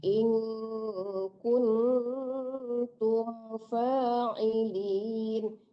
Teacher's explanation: In-nya dengung ya Bu, kunnya dengung, tapi tumnya tidak ya. Tumnya itu izhar syafawi ya, tidak berdengung.